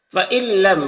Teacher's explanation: نون ساکن کے بعد لام حروف یرملون میں سے تو ادغام تام ہوگا